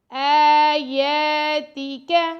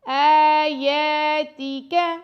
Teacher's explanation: حمزہ پر اور یا پر دونوں پر کھڑا زبر ہے تو دونوں کو 2 سیکنڈ تک لمبا کر کے پڑھیں گے